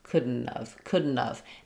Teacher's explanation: And in spoken speech this this serves as more of a reduction. So have reduces to just of instead of couldn't have.